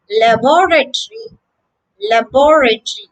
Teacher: here the second syllable is stressed